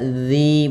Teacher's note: zal makhrajnya adalah ujung lidah kita. Ujung lidah kita menempel dengan gigi seri atas, ya, sehingga dia terbaca zi bukan lagi zi.